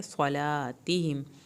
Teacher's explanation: सौत को पुर करके या साकिन जब लीन होगा, या साकिन की वजह से इसको थोड़ा खींचना है